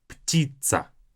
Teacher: Make sure that you don't say птица. Not the S sound, but a TS sound.